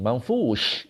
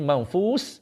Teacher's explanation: Shin dia ada tafashi, hemburan.